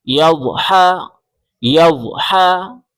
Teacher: یا ضاد زبر یض، یا ضاد زبر یض، یا ضاد زبر یض، حا زبر حا، گلے سے زور لگا کے حا نکالیں